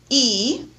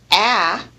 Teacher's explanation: e is a high vowel with the jaw in raised position and the tongue is high in the mouth nearly touching the · mouth nearly touching the pallet a on the other hand is classified as a low vowel because the jaw is lowered